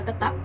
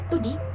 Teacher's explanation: perubahan bunyi T yang biasa diucapkan apikodental seperti kata tetap, tetapi pada kata studi diucapkan secara lamino-alveolar